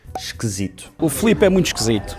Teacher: estes Is átonos transformam-se em Es, como na palavra esquisito, que nós dizemos esquisito.